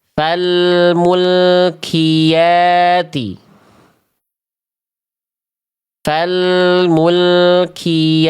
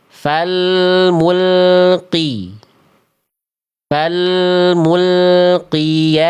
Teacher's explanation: Nah, ini bacaan yang salah karena qofnya keluar percikan nafas.